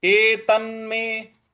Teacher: एत न जो आधा न है इस पर हमको आघात देना है बल लगाना है